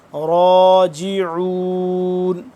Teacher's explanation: را کھڑا زبر را ایک الف کے برابر اس کو لمبا کریں گے